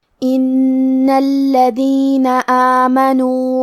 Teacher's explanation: کیونکہ حرف نون پہ تشدید ہے تو ہمیں دو حرف کے برابر نون کو پڑھنا ہے کیونکہ تشدید کی اصلیت دو حرف ہے.